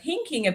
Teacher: you can hear there the TH sound didn't come out